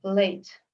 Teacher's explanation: Late begins with a lateral approximant, so they are all supposed to be vowel-like, but with no such a bright formant structure on higher frequencies.